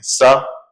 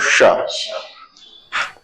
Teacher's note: जीभ थोड़ी दांत के ज्यादा पास होगी, थोड़ी सी दूर को जाएगी, तालू की तरफ जाएगी, फिर जो है मूर्धन्य की तरफ जाएगी